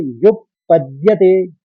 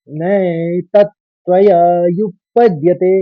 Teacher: युप कहेंगे क्योंकि प के ऊपर आघात है, तो युप, फिर पद, फिर द्यति